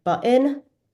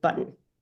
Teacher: Younger people are saying things like button, whereas older people are saying button. There's an extra vowel before the N.